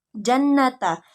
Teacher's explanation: Yang keenam gunnah pada ayat jannata, yaitu huruf nunnya bertasydid dan ketika dibaca huruf nunnya harus didengungkan 2-3 harokat